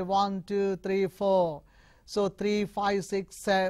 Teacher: if you have a long list rising rising and falling